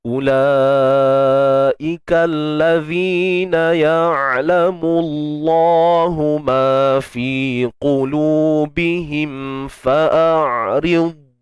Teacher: Huruf qaf ni kita tebalkan dia tuan-puan.